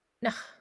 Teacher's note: It's a little bit harder and a little bit faster of a consonant, and it pops out a little bit more than a regular English N. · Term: hard N